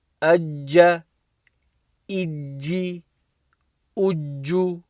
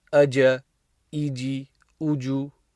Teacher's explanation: So there's a bit of emphasis when you join on a shadda. It should be clear that there's two letters there. Like as opposed to reading aja, iji, uju, there's no emphasis, there's no pressing.